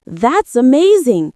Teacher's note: When you say, That's amazing, your voice should rise with excitement.